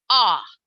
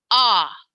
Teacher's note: short o says ah i drop your jaw ah